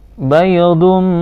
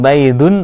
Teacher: bacaan idgham bi gunnah, dimasukkan dengan dengung. Jadi harus ditahan ya.